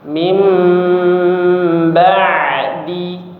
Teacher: bunyi nun sukun berubah menjadi bunyi mim sukun disertai dengan dengung ya atau disertai dengan ghunah. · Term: iqlab